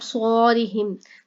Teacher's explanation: صاد کو موٹا کر کے پڑھا جائے گا